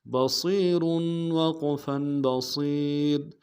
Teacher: صاد کی سیٹی موٹی ہوگی